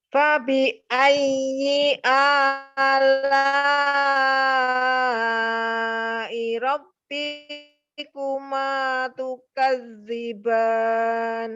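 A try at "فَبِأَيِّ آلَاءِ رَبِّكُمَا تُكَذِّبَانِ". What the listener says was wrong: Nah, sama B-nya juga jangan ngayun. B-nya jangan Robbi, jangan ya. Ya, B-nya jangan ngayun tuh. Kalau dia ngayun dia pasti 2 itu panjang ya. Robbikuma, maka ayunnya setiap yang matobi aja. Jadi kalau yang pendek jangan diayun, maka dia pendek ya.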